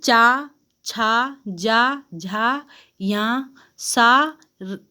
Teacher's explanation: हमारे मुख जो जीभ है ना, ये तलवे में छूकर बोलते हैं ये वर्ड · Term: तालव्य व्यंजन